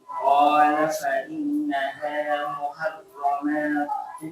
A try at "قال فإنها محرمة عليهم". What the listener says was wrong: Jadi ingat kalau tidak ada alif jangan dipanjangkan ya, maksudnya mimnya. Qala fa innaha muharramatun.